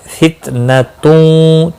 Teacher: تنوین کے بعد حروف یرملون کا واو ہے، ادغام با گنہ ہوگا